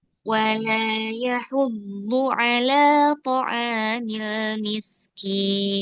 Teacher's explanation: Jadi ujungnya tuh diturunkan. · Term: nada turun